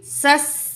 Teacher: तो अलिफ लाम नहीं पढ़ा जाएगा तो दो सीन पढ़े जाएंगे। तो किस तरह पढ़ना है हमने, सीन ज़बर सीन, सस सीन ज़ेर हा, सिह सिह।